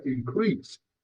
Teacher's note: When increase is used as a noun, the stress is on the first syllable, so we pronounce it increase. But when this word is used as a verb, the stress is on the second syllable